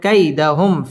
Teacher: মিম সাকিন ইজহারে খাস গুন্না ছাড়া পড়তে হবে